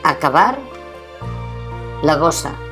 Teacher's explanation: Parlava, volia, i la B intervocàlica es pronuncia amb els llavis oberts